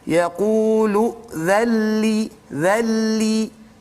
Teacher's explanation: Kemudian dzalli tu nun sakinah bertumbuh dengan lam, maka kita panggil dia sebagai idgham bila gunnah. Jadi huruf nun itu masuk ke dalam lam secara kamil, secara sempurna, maka tidak bunyi lagi huruf nun dan tidak ada gunnah di situ. Jadi jangan panjang-panjang pula.